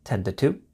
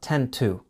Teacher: the 2 sound becomes more of a quick d sound